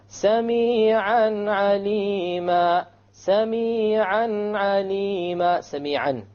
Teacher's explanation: Simple, clear, crisp noon, a tanween, and then you move on to the ayn.